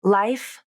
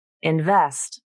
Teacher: the F consonant does not have vibration because it is a voiceless sound so the vocal cords are turned off as you say it